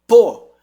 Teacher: é o mesmo do B só que agora mudo eu não ponho voz no B eu ponho quase a mesma coisa só que um tem voz